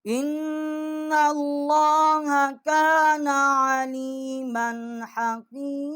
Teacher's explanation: نا اللہ آواز جو ہے ہم نے تھوڑا موٹی کی ہے. علیما حکیمہ یہاں ہم نے غنہ نہیں کیا، آگے حروف حل کیے ہیں.